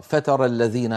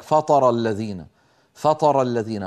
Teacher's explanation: يعني لما أنا أريد أن أنطق مثلا حرف التاء، تا من المخرج نفسه حرف الطاء، فإذا فخمت التاء قليلا تتحول إلى طاء